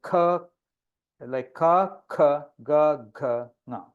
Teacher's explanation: they are pronounced from the back of the oral cavity. That is the behind the neck, the throat.